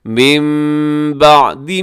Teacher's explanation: نون ساکن کے بعد با ہے تو یہاں کریں گے آپ اقلاب، نون کو میم سے چینج کر کے پڑھیں گے